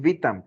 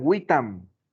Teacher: en latín tenía otra característica que sonaba como una w